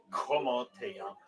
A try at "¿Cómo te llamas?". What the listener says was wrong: Don't say Tay. Tay, that's no American. ¿Cómo te llamas? Because your your T can't be too strong, right? It has to be like te, right? ¿Cómo te llamas? Not T, not como te llamas.